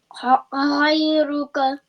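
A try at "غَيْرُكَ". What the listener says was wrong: Ghayruk. Good job.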